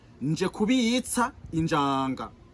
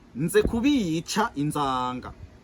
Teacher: le J Injanga du reste du Burundi est archaïque par rapport au Z d'Inzanga de Buhonga